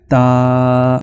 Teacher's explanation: ता की आवाज जुबान का जो अगला किनारा होता है इसको जब हम ऊपर के दांतों की जड़ों से लगाएंगे तो तब ता की आवाज पैदा हो जाती है। तो बाज लोग ता की जो आवाज है इनमें फर्क नहीं करते।